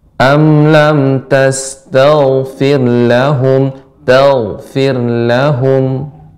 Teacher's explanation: untuk ghain dia tebal, naiknya suara ke langit, kemudian mengalir.